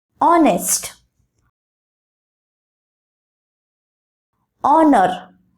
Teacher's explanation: In these words, H is silent and instead of that, O sound is pronounced. These words take on a vowel sound and are thus written with an before them. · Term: silent H